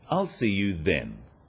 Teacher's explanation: Notice how the stress is on the word then to confirm that the time is definite.